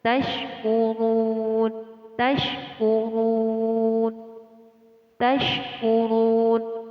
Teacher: Terdapat ro di sini, ro yang ditandai dengan harokat dhammah, dibaca tebal atau tafkhim